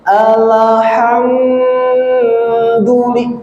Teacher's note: mim sukun bertemu dal tidak didengungkan karena ini termasuk dari izhar syafawi